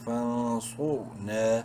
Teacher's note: را ساکن سے پہلے چونکہ صاد پہ پیش ہے اس لیے را کو بھی بولڈ کریں گے